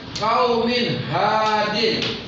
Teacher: cara membacanya nun mati atau tanwin jelas dan terang tanpa disertai dengung jika bertemu dengan huruf hijab. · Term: izhar